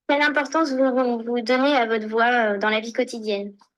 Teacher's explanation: the voice is more regular without forcing, but still a little bit breathy.